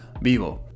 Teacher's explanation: I'm also doubtful about the V sound, but it should sound closer to a B